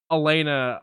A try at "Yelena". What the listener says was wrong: I thought you said Elena at first, not Yelena.